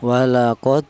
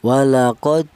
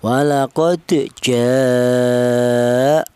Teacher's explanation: Qalqalah itu artinya yaitu ada suara pantulan. Jadi, cara bacanya huruf dal yang mati ini dipantulkan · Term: qalqalah sughro